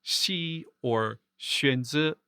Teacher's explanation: The S hachek is similar to the X in the Hanyu pinyin romanization of Mandarin, as in Xi or Xuanzi. It's kind of like an English sh sound, but with your tongue kept flat towards your palate. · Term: palatal fricatives